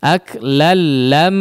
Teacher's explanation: Di huruf mimnya baru digunnahkan dengan kadar gunnah yang panjang. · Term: Idgham bila gunnah